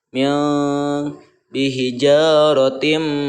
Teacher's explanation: nun mati bertemu dengan shin itu didengungkan, disamarkan dan didengungkan cara membacanya. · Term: ikhfa